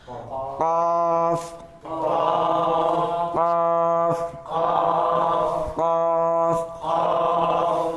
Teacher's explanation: Ini qaf di pangkal lidah.